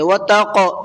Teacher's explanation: قاف کے اندر قلقلہ کریں گے